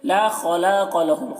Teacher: خا کو پر پڑھیں گے، حروف مستعلیہ میں سے ہے، اور قاف کو بھی پر پڑھیں گے، حروف مستعلیہ میں سے ہے.